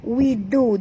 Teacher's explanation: du ni sentil lidah, ya, kena makhraj dal di hujung lidah.